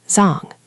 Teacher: a very common surname written differently that's pronounced Zang with a flat dental